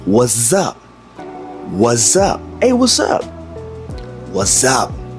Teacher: You notice I'm saying what's up? But because I'm speaking so fast, it sounds like we have a Z.